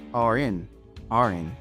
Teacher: the word r links to n